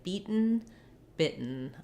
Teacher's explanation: I stop my T and then I make a short N sound. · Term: stop T, syllabic N